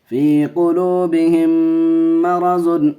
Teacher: میم ساکن کے بعد میم آئے ادغام شفوی کا قاعدہ گننا کر کے پڑھیں گے